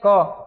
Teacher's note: बोलते में ज्यादा हवा सांस नहीं लग रहा है ना इस तरह से अल्पप्राण होता है